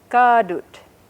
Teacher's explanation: you just hold on to that vowel a little bit longer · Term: long vowel